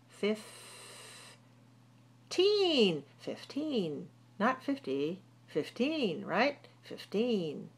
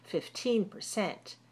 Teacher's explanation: Stress the second syllable and put the t on the teen.